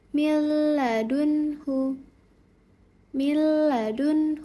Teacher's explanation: Yang pertama ketika nun sukun atau tanwin bertemu dengan huruf lam yaitu tanpa gunah ya tanpa dengung menjadi millun huadun hu dibaca dengan jelas. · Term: idgham bila ghunah